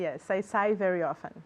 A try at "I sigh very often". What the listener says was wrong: Good, okay.